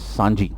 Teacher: So this cha in the beginning becomes sa, the same symbol. Cha in the beginning of a word, it becomes sa, and cha after this n sound, it becomes ja.